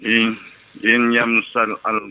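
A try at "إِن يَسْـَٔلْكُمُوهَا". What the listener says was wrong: Bukan im ya, i.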